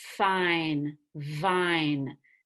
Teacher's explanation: air keeps going through your mouth F and V fine vine they use the top teeth and the bottom lip